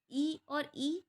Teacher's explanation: ई और ई जब आप बोलेंगे तो तालु लगेगा, तालव्य स्वर है ये।